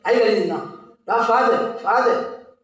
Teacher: So you hear the second syllable, it's pronounced with the less force.